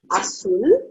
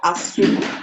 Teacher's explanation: So we have agudo, last syllable gets the emphasis.